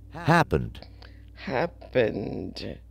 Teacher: it doesn't have a t sound at the end so it would just be the D sound